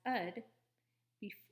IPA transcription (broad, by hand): əd